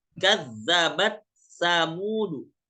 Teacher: Jadi dia cukup dibaca dengan sa bertasydid.